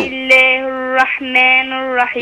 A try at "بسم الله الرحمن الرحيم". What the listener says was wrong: لا اكسري بقى، الرحمن الرحيم، لا الرحماني، لا ما تسمعيني بس، الرحمن الرحيم،